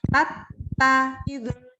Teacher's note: kalau huruf ta-nya bertasydid tidak keluar hamsnya sama sekali